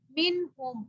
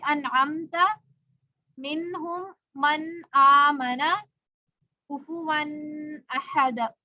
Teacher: نون ساکن کو ظاہر کر کے پڑھنا ہے، بغیر غنہ کر کے پڑھیں گے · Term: اظہار حلقی